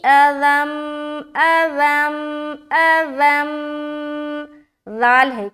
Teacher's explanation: ذال ذال، بالکل سیٹی کی آواز نہیں آئے گی